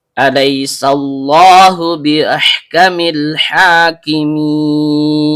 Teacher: Diawali dengan hamzah berbentuk alif atau hamzah kot yang keluar dari tenggorokan bagian bawah. Lam ujung lidah bertemu dengan langit-langit bagian depan.